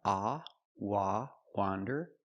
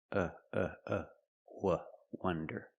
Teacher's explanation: Wander with the open sound, ah, wah, wander, and wonder with the closed sound, wah, wonder.